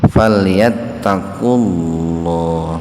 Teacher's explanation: Wawunya diabaikan saja. Jadi lafaz Allahnya dibaca tebal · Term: Tafhim lafdzul jalalah